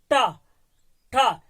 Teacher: देखेंगे टा, ठा, जीवा को तो हम टच कर रहे हैं, लेकिन ये अंतिम जगह इस तरह से अंतिम मोड़ करके, मूर्धा, अंदर की तरफ मोड़ करके उसे मूर्धा बोला जाता है